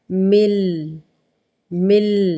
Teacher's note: میم زیر نون، من پڑھیں گے، پھر لام ہے، لیکن نون جو ہے وہ سائلنٹ ہو جائے گا، غائب ہو جائے گا